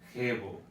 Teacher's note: it was a more guttural sound, like in the back of your throat. So it was like a hebo.